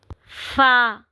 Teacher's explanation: ऊपर के दांतों की जो नोक है जब नीचे वाले हंठ से लगेगी तो वहां से फ अदा होगा। यह हरूफ शफविया हैं जो कि होठों से अदा होते हैं। · غین. فا، اوپر کے دانتوں کی جو نوک ہے جب نیچے والے ہونٹ سے لگے گی تو وہاں سے فا ادا ہوگا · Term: حروف شفویہ